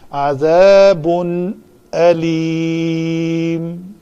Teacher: تنوین کے بعد حمزہ ہے تو اس تنوین کا اظہار ہوگا